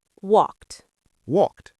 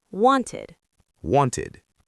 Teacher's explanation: In walked, the ed sounds like t, walked. But in wanted, it sounds like id, wanted.